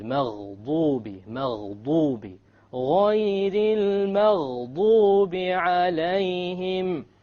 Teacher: It is very important that you don't make a dad into a dal or a d sound, because the dal comes from the middle of the tongue, but the dad, remember, it comes from one entire edge of the tongue along with the molars